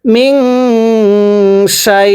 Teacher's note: হামজা দুই জের ইন মিং শাই ইন ওয়াকফ করলে মিং শাই ওয়াকফের সময় আমরা তিন আলিফ টেনে পড়ব মদের হরফ ইয়া এর পরের হরফে ওয়াকফ হইলে তিন আলিফ টানতে